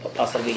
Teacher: जिन वर्णों का उच्चारण करते समय जिह्वा का अगला भाग मसूड़ों को स्पर्श करता है, हवा पार्श्व के आसपास निकलती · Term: पार्श्विक व्यंजन